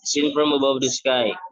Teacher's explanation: exemplifies iambic meter with the stress falling on the second syllable of each foot